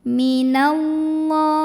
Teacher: Karena alif lamnya bertemu huruf syamsiyah yaitu lam. Maka alif lam tidak kita baca lebur langsung dari nun ke lam berikutnya. Minallah. Ada mad asli atau mad tabi'i karena ada baris fathah tegak di atas huruf lam. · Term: alif lam syamsiyah